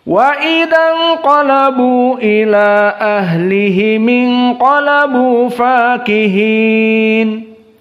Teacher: Tadi qiraah Abu Amr dalam keadaan dipendekkan al-qasr dari majaiz munfasil. · inqalabu bertemu dengan hamzah ila, maka hanya dibaca 2 harokat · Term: qasru mad jaiz munfasil